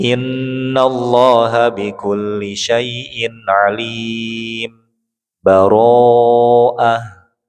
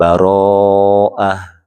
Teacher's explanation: mad arid li sukun itu panjangnya boleh 2, ya, kemudian boleh 4, ya, dan juga boleh 6